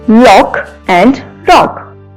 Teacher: Now short vowel sound O is used to pronounce these words. In this case, L and R is different, which occur initially. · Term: minimal pair